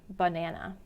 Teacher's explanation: in the word banana, schwa sounds a little bit closer to a short U sound.